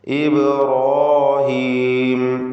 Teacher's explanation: ഈ പദത്തിൽ ബഇൻ്റെ സുക്കൂൻ ഖൽഖല സുഗ്റ നൽകി ശബ്ദം ഹറക്കത്ത് പോലെ ചലിപ്പിക്കണം. ഇബ്രാഹീം, റാഇനും അതിൻ്റെ ദീർഘാക്ഷരമായ അലിഫിനും തഫ്ഖീം കൊടുക്കണം, തടിപ്പിച്ച് ഉച്ചരിക്കുക.